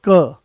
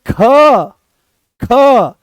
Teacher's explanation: एकदम से क की अपेक्षा ज्यादा दम लगाना पड़ा। ख आपने ज्यादा दम लगाया। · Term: महाप्राण